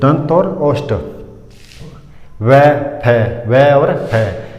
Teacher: दंत और ओष्ठ का दोनों की सहायता से बोले जाते हैं